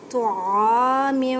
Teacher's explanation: طا کو ادا کرتے وقت خیال رکھیں کہ تا کی آواز نہ آئے کیونکہ یہ حروف مثقالیہ یعنی موٹے حروف میں سے ہے